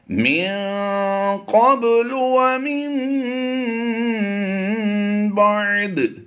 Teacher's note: یہاں پر ہم نے اخفا کرتے ہوئے غنہ زمانے کی آواز دینی ہے، اور یہ قاف ہم نے پر کر کے پڑھنا ہے، با پر ہم قلقلہ کریں گے۔